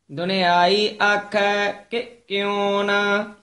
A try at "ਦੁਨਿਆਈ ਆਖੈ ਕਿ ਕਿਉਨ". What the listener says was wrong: ਦੁਨਿਆਈ ਆਖੈ ਕਿ ਕਿਉਨ ਵੱਖਰਾ ਬੋਲਣਾ, ਕਿ ਕਿਉਨ ਨਹੀਂ ਕਹਿ ਦੇਣਾ। ਦੁਨਿਆਈ ਆਖੈ ਕਿ ਕਿਉਨ।